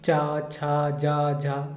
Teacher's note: जो पूरी जीभ है उसका टच करती है ऊपर तालु में जाके, इसलिए इसका उच्चारण स्थान तालु माना गया है।